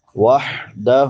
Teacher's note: چھوٹی ہا ہے، وسط حلق سے ادا ہوتی ہے